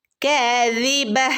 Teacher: കാദിബ ഒരു ഹ സൗണ്ടാണ് വരേണ്ടത് കേട്ടോ. തഇൻ്റെ സൗണ്ട് വരാൻ പാടില്ല, ഒരു ഹ ഇൻ്റെ സൗണ്ട് വരണം.